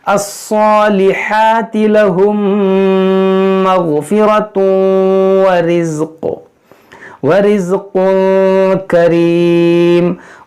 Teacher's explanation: यहाँ तनवीन के बाद वाव, यहाँ पर इदगाम करेंगे, यानी नाक में आवाज़ जाएगी।